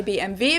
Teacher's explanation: differently in English and in German in English people say BMW in German we say BMV because W is pronounced V in German